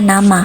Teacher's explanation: dengan ciri hidup nasal apiko alveolar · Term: n terbuka